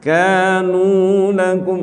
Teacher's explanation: Kanu ka sama nu posisinya sama Pak, dua harokat mad tabi'i.